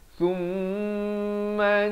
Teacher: Mim yang bertanda sabdu wajib dengung 2 harakat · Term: wajibul ghunnah